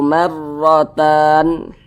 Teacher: Kemudian huruf ra yang memiliki tanda baca fathah, maka huruf ra dibaca tabkhim, dibaca tebal, sehingga pangkal lisan kita itu naik terangkat ke atas ketika kita mengucapkannya